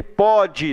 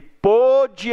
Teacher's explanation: O pode, você pronuncia com som aberto. O pôde, você pronuncia com som fechado. Então esse acento circunflexo está aí para dizer que o som ali é fechado.